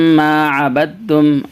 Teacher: میم کے اوپر تشدید ہے اس لیے غنہ ہوگا